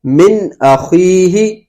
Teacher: من اخیہ کے اندر ہم نون ساکن کو ظاہر کر رہے ہیں، غنہ نہیں کر رہے۔ من اخیہ نون ساکن ہے، نون ساکن کے بعد حمزہ آ رہا ہے تو یہاں پر اظہار ہوگا، غنہ نہیں کیا جائے گا، نون ساکن اور تنوین کو ظاہر کریں گے۔